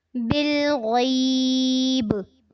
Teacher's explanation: बिलग़ैब, बा पे कलकला करना है।